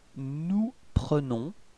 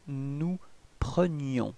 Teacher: the only way to make the difference between présent and imparfait, it's this I. So the y sound